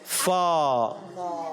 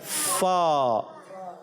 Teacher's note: ऊपर के दांत जब नीचे वाले होंठ से लगते हैं तो अदा आता है फा